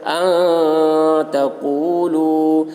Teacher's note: حروف اخفا میں سے تا آ رہا ہے، اس لیے نون کی آواز کو ناک میں چھپا کر پڑھیں گے، اس کو اخفا کہتے ہیں۔